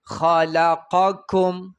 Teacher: خا غټه لام باریک، قاف بیا غټ، کاف بیا باریک